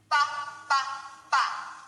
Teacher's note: that's a b sound same as P but with our voice